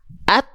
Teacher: ketika syiddahnya muncul, at, baru keluar percikan nafas. · huruf ta dia nggak bersandingan dengan rokhwah, nggak mengalir suara tapi tertahan suaranya syiddah. Akhirnya ke nafas kita berimpak hanya berupa percikan nafas saja.